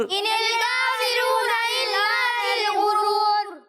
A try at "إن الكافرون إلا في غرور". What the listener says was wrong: فی غرور نہیں, فی غرور ٹھیک ہے, کھینچنا ہے. فی غرور.